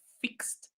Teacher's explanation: When there is no vibration, like fixed, no vibration, so the ed that follows is pronounced as t.